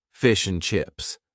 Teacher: the word and is in a weak form, and basically we only say N